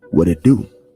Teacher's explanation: the flap T sound which is basically the T at times when there's not a lot of attention to the T in a specific word it is transformed and flipped around and the pronunciation becomes a D.